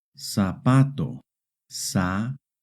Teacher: Try reading this word. In Hispanic America, the letter Z makes an S sound.